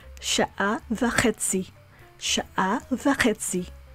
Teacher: So you'll see that there's a stress point on chetzi. It's rapidly spoken.